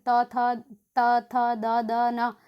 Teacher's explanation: त बोल के देखिए दांतों पे लगती है